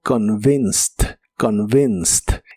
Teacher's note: pero esta ed se pronuncia como T